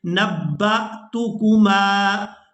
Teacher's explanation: با کو حمزہ ساکن کے ساتھ ملائیں گے تو جھٹکے کے ساتھ ادا کریں گے.